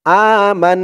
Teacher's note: এখানে ওয়াজিব গুন্না হবে হরকতের পরে নুনের উপরে তাসদিদ আসছে